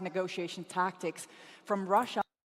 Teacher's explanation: she is really stressing the first syllables on these words.